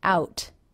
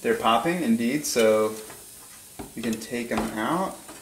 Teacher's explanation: makes a stop t on the word out he does not release it